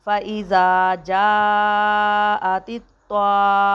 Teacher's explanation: الف مد زبر طام، فَإِذَا جَاءَتِ الطَّامَّةُ، میم مشدد ہے، میم کے اوپر شاد ہے، اس وجہ سے میم کے اوپر غنہ بھی کریں گے